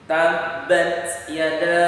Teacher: perhatikan bunyinya, ada keluar angin sedikit. Tabbat yada, tapi jangan terlalu kuat. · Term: huruf hams